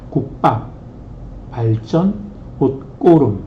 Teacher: 기역이나 디귿이나 시옷이나 지읒이 이것이 이제 쌍기역, 쌍디귿, 쌍시옷, 쌍지읒으로 발음되는 것입니다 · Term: 된 소리